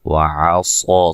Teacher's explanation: فَكَذَّبَ وَعَصَىٰ کاف کو بریک, کاف کو ذال سے سختی سے ملائیں گے, ذال کو نرم ادا کریں گے. وَعَصَىٰ صاد کو موٹا ادا کریں گے اور یہ مد اصلی ہے